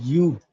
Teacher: you have to say it like ooh rounding your lips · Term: elongated O